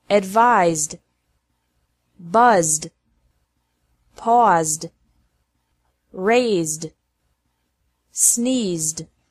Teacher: Ed is pronounced like D after verbs ending with a Z sound.